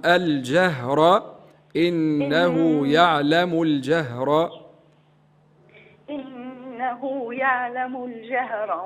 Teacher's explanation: رقوا شويه حرف الجيم والهاء معا